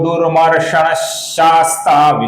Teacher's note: दुरमषण का जो विसर्ग है इसके आगे श आने के कारण हम इसका हल्का सा श ऐसा उच्चारण करते हैं।